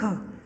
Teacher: यह हिंदी की कंठ्य, सघोष, स्पर्श एवं महाप्राण ध्वनि